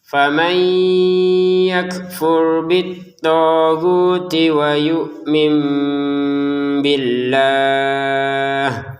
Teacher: Faman nun sukun bertemu ya dibaca dengan dengungan. Ya, nun sukunnya masukin ke ya dengan dengungan.